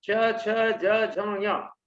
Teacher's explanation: ये तालु से निकलते हैं, कंठ के ऊपर के भाग से।